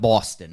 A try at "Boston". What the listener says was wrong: Except you said Buxton instead of Boston.